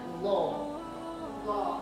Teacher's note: huruf zo ini karena dia tebal maka lidah belakang itu terangkat